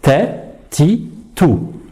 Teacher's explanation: Donc ça, c'est une erreur. On doit entendre un petit son S, mais il ne faut pas trop l'exagérer.